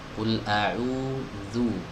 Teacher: agar huruf zalnya terbaca benar-benar tipis dan tidak tertukar dengan huruf zo